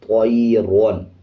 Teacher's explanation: را کو پر یعنی موٹا پڑھا جاتا ہے۔ اب اس کو بھی موٹا پڑھیں گے طیرون۔